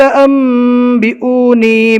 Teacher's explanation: نون ساکن کے بعد اقلاب کا ایک حرف با آ گیا تو نون کو میم سے بدل کر پڑھنا ہے، اس لیے نون نہیں پڑھا جائے گا، نون کی جگہ میم پڑھا جائے گا۔